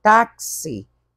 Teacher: porque esse x virou KS viu são dois sons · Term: dífono